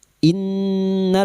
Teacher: nun yang bertasdid guna musyaddadah dengungan selama 3 harakat. Dan ini kadar dengungan yang paling kuat.